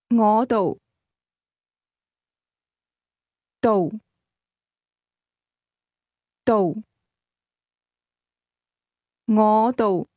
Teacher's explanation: That's a combination of low rising and lowlevel tones.